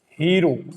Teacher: मारवाड़ी में स का उच्चारण ह रूप में होता है